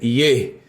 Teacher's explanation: a primeira vogal que ocorre naturalmente é um Shevá com som de E